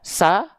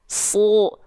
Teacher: Huruf tebal ketika fathah dibaca dengan vokal O